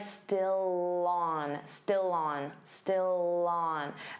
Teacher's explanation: Notice how still and on linked together